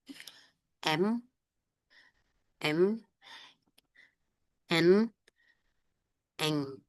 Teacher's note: Lalu ada sengau atau nasal. Ini udaranya keluar lewat hidung.